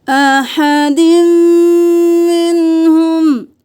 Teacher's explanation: دال کو میم کے ساتھ ملائیں، میم پہ تشدید ہے، غنہ کریں